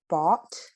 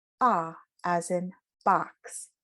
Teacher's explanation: ah a little wider in the back of the mouth this is a back vowel ah as in box